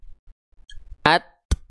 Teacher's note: Ketika nempel tertahan dulu suaranya. Ketika lepas keluar percikan nafasnya.